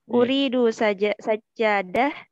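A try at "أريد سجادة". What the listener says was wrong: intonasinya tidak bertanya ya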